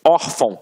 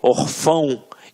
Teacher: reparem que a sílaba tônica está na penúltima sílaba. Por isso é uma paroxítona.